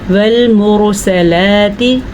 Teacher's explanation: تو اسے ہم کیسے پڑھیں گے؟ والمرسلات، تا کو لمبا نہیں کرنا، اگر اس کو ہم نے تی کر دیا تو یہ غلط ہو گیا